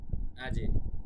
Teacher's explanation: জিমের উপরে একটু কলকলা হবে